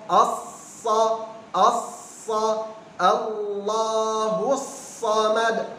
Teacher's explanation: huruf sad ujung lidah di bawah belakang gigi seri bawah ya kemudian tengah lidah dan belakang lidah angkat ya karena tebal huruf itbaq dan isti'la